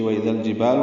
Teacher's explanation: واو ہونٹوں کی نا تمام گلائی سے، حمزہ اقصی حلق سے، بالجہر دال کو نرمی سے اور لام سے ملا دیں گے۔